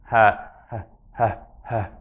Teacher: Ha is the breath that comes emanating from basically the level of the vocal cords.